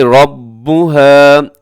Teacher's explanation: اس میں را کی پر زبر ہے تو را اپنے موٹی پڑھنی ہے